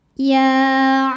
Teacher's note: sebab ya berharakat fathah panjang cara membacanya panjangkan dua harakat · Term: Mad thii muqadar